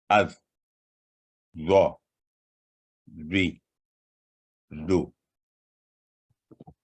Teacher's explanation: اس کے بعد ہے ذو، یہ بھی تخفیم لیٹر ہے، موٹی آواز والا لیٹر ہے۔ زبان کی نوک کو اوپر والے دانتوں کے نچلے کنارے سے لگانے سے یہ حرف ادا ہوتا ہے، اور زبان کا درمیانی حصہ اوپر اٹھاتے ہوئے ہمیشہ بھاری آواز میں ادا ہوتا ہے